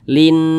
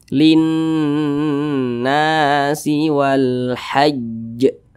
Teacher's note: Jadi digunnahkan itu suaranya itu kita tahan, kita panjangkan sejenak. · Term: gunnah musyaddadah